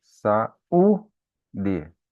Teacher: Então, o U é a sílaba tônica.